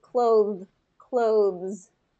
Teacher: That is actually a voiced TH at the end